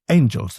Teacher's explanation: Shakespeare breaks the pattern. He says, Angels. He hit that first syllable really hard. · And angels does not go dee-DUM, because we don't say anGELS